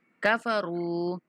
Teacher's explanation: را کو 1 سیکنڈ تک کھینچیں گے